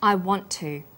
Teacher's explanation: the final t sound in want is held slightly longer on the tongue then tu is pronounced t sound is pronounced only once i · The t sound is pronounced only once. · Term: consonant plus same consonant linking